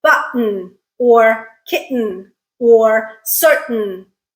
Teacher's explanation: so there's that little glottal stop in the middle there